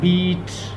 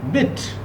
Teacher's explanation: इसमें मैं इसको लंबा करूंगा ई की साउंड को। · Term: लॉन्ग वावल